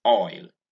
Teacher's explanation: OIL, which many Nigerians pronounce as oye. All right, that's very crude way of pronouncing the word. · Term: diphthong oi